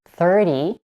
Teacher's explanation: in tens such as 30, the primary stress is on the first part of the word.